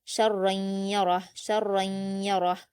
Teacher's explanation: را پر 2 زبر کی تنوین ہے تو پر پڑھیں گے را کو، اور اس کے بعد یا ہے تو ادغام یرملون ہوگا اور یہاں غنہ ہوگا